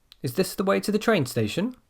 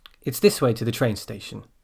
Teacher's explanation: Okay, so notice the change in pitch there. The first one goes up. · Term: intonation